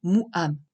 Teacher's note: En hébreu moderne, on le simplifie souvent en se contentant de couper le son entre deux syllabes, tout comme on le fait avec le aleph, ce qui en fait essentiellement une voyelle, comme c'est le cas dans le mot mou'am. On distingue bien la séparation entre les deux syllabes mou et am.